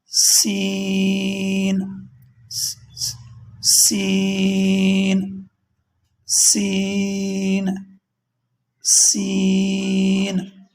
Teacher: جب ہم سین کو پڑھتے ہیں اس میں مکمل سیٹی ہے، اسے سختی کے ساتھ پڑھا جاتا ہے۔